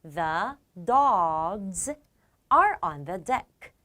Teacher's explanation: 앞에 있는 명사가 dog의 g처럼 유성음이거든요. 유성음으로 끝나면 z로 읽으시면 됩니다.